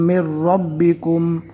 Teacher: میم کو ڈائریکٹ رو سے ملا رہے ہیں، نون نہیں پڑھنا۔